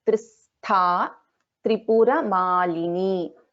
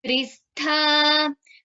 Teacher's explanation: Trayi Trivarga Nilaya, Trayi Trivarga Nilaya, Tristha, Sa and Tha is a Mahaprana